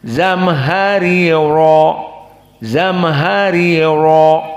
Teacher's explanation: Ada dua ro. Ro yang pertama kasroh, maka muraqqaqah. Ri. Dan yang kedua fathah bagi qiraah Hamzah, ro mufakhamah.